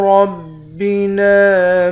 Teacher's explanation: را کو موٹا پڑھیں گے، نون کے بعد الف ہے، الف حروف مدہ ہے، ایک الف کے مقدار کھینچتے ہیں۔